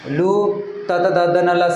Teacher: आपली जीभ बोलताना दाताला स्पर्श होते म्हणून याला दंत्यवर्ण म्हणण्यात आलेला आहे